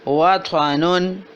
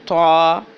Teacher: طا کی آواز موٹی اور جھٹکے والی ہے